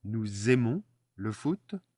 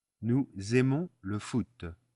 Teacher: So the S becomes a Z. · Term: liaison